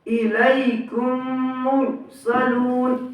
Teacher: میم ساکن کے بعد میم آئے تو میم کو میم سے ملا کر گنہ کے ساتھ پڑھا جائے گا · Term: ادغام شفوی